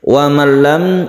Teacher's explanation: Wa man lam idgham bila gunnah, bila la artinya tidak ya, tidak gunnah artinya tidak dengung, idgham artinya dimasukkan, nun ini dimasukkan ke lam, suara nun menjadi hilang jadi tasydid lam.